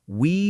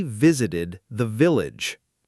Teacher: Notice how we starts with rounded lips, no teeth involved, but visited and village both use the teeth on lip V sound.